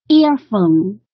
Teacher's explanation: 这个重音应该是▁ear▁在前面